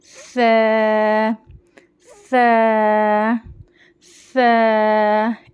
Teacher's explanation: जबान की नोक ऊपर के दांतों के कॉर्नर्स को लगाते हुए थोड़ी सी जबान को नोक बाहर निकालनी है एक चावल के दाने के बराबर और बारीक आवाज से पढ़ेंगे · ث زبان کی نوک اوپر کے دانتوں کے کارنرز کو لگاتے ہوئے تھوڑی سی زبان کی نوک باہر نکالنی ہے, ایک چاول کے دانے کے برابر, اور باریک آواز سے پڑھیں گے ث ث ث, اس طرح سے.